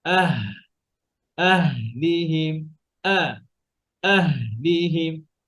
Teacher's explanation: এটা সিদ্ধার হরফ, আর হা হচ্ছে সিদ্ধা না, হা এর মধ্যে সিদ্ধা সিফাত নাই, কি আছে? হামস আছে, হ্যাঁ, রখাওয়া আছে, আওয়াজ চলবে স্বাচ্ছন্দ্যে, আবার বাতাসও বের হবে।